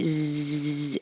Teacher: the air goes through a narrow space at the front of the mouth